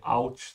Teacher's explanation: There's actually a T sound, but it's just not written.